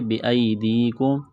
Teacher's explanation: یا ساکن سے پہلے زیر ہے، اس کو ایک الف کے برابر کھینچنا ہے